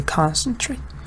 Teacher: concentrate is a verb, but the stress is on the first part